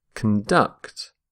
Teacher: But when we use the verb, which is what I'm going to look at here, stress the second syllable